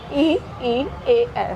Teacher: ठीक है, यहाँ से जब उच्चारण किया जाएगा तो जिन स्वरों के उच्चारण में जीभ के अग्र भाग का प्रयोग होगा वो हो जाएंगे अग्र स्वर